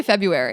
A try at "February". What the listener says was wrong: February. No, you don't pronounce the R. February. February.